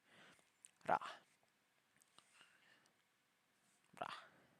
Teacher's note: Actually, calling it the R sound is a bit misleading as it is somewhere between the L, R, and D. It kind of sounds like a very short version of rolling your tongue, letting it only hit the roof of your mouth once.